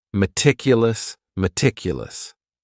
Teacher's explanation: this word has four syllables. And the stress is on that second syllable.